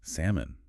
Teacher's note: salmon comes from the old French word SoMo and over time that l sound just faded away · it's salmon that L is silent